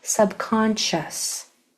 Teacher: Now, because this says shh, this S sound is going to blend into this SH sound. It's going to be hard to hear the S at all.